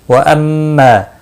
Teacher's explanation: میم مشدد پر غنہ ہوگا